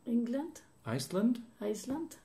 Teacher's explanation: the last syllable of a two or more syllable word specially when it's a noun changes from the original vowel sound of AE to a schwa · the last syllable is not stressed in a noun so it changes to the schwa